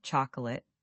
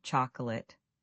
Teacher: It's faster and smoother. The middle syllable almost vanishes.